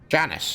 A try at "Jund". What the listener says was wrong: Jund. No, no S, just Jund.